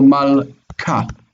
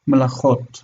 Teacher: That in the single form we have a broken syllable here, mal ka, mal kot, and so we have the beged kefet letter that is following a silent shva that closes that syllable. When you have beged kefet following a silent shva, it's hard. So mal ka, this is ka. But in this case, it's following a vowel, mela, and then we have chot, it's soft, melachot. Melachot is queens.